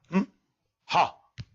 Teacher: Hamza and ha will be pronounced from bottom of the throat. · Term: aqsal halq